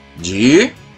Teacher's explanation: A sílaba tônica dessa palavra é a penúltima sílaba. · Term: paroxítona